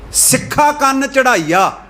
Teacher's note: ਹੁਣ ਅੱਗੇ ਜਿਹੜਾ ਸ਼ਬਦ ਆ, ਜਿਹੜੇ ਸੰਸਕ੍ਰਿਤ, ਜਿਹੜੇ ਦੂਜੀ ਭਾਸ਼ਾ ਦੇ ਵਿੱਚੋਂ ਸ਼ਬਦ ਆਏ ਆ ਨਾ, ਤੇ ਇਸਤਰੀ ਲਿੰਗ ਆ, ਉਹ ਜਿਹੜੇ ਸ਼ਬਦ ਆ ਉਹ ਕੱਲੇ ਕੰਨਾ ਉਚਾਰਨ ਕਰਨਾ, ਉਹਨੂੰ ਬਿੰਦੀ ਰਹਿਤ ਉਚਾਰਨ ਕਰਨਾ, ਉਹਦੇ ਉੱਤੇ ਬਿੰਦੀ ਨਹੀਂ ਉਚਾਰਨ ਕਰਨੀ।